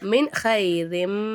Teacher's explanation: ஹா வந்து இல்ஹாருடைய எழுத்து அப்ப நம்ம நூனே சக்கினை வெளிப்படுத்தி ஓதணும் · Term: இல்ஹாருடைய சட்டம்